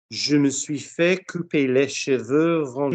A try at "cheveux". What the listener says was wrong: Not cheveux. Cheveux. You didn't like going down to che because you just done les. Yeah, je me suis fait couper les cheveux.